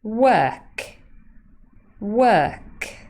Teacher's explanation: the final consonant is unvoiced well the first consonant is voiced